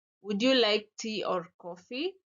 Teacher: so my intonation first Rises and then Falls